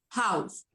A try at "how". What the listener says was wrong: Y no tiene S al fin. Es una casa. House es una casa. How.